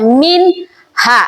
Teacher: Ah, jelas kita membacanya min ha. Tidak boleh didengungkan.